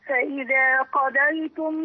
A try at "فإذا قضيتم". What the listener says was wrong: لا أنا باين الضاد بقى، قضيتم، لا قضى، عندي قاف مفخمة وضاد مفخمة.